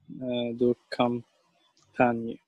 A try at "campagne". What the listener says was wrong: Campagne, très bien.